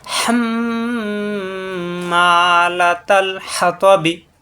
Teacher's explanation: মিমে তাজদিদ অজীব গুণা, মুখ বন্ধ রেখে গুণা হবে। · তয় সাকিন হলে তয় সাকিন কলকলা হয়ে যাবে